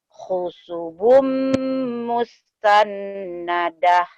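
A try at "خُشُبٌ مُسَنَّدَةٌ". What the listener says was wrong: Bukan musan, tapi Musa saja ya. Musa ya, Teh. Lagi.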